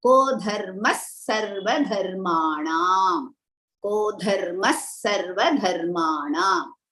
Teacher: So dharmaha, after the Visarga, the following letter is sa. So we are going to use half sa for it.